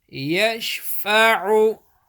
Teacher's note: Man dhalladhi yashfa'u. Ain pesh, ain middle of throat